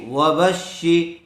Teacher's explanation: دیکھیے، واو زبر و، با شین زبر بش، و بش شین زیر شی، و بش شی، شین کے اوپر تشدید ہے اس لیے با کو شین سے ملا کر پڑھیں گے۔ تشدید والے حرف کو 2 مرتبہ پڑھا جاتا ہے، ایک مرتبہ اپنے سے پہلے والے کے ساتھ ملا کر، اور دوسری مرتبہ خود کی حرکت کے ساتھ۔